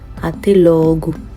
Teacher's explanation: So the last sound comes like a U, okay? When you see an O ending any word in Portuguese, you're going to get the U sound